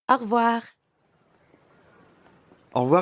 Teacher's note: when French speakers say au revoir quickly, it can sound like one word.